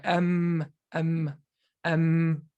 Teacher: m m m there's no way you can pronounce m right because you close the lips so the whole thing is coming out of your nose